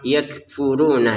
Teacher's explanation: Kafnya ini ada letupan nafas.